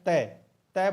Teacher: जो जीभ है वो दांत के टकरा रही है